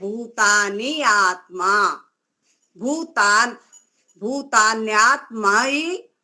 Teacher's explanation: ई और अ मिलकर या हुआ है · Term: संधि